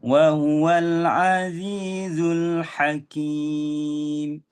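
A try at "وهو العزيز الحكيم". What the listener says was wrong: tadi tadi tu cantik dah tadi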